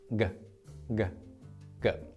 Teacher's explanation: This letter represents the shape of your tongue when you make this sound g. The upper back portion of your tongue temporarily blocks the flow of air from your throat. So it makes this shape. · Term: kio sound